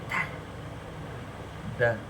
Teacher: the tip of the tongue is touching the upper teeth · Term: dental consonants